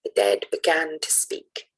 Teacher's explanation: the stress pattern is da-da, so unstressed and then stressed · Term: iambic